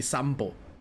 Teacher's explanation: It's written as sanpo, but it's easier to say it with an M, so they say sampo. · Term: M sound